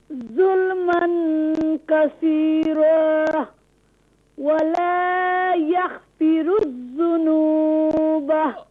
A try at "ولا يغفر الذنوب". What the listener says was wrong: غين is read full mouth. Don't do قلقلة.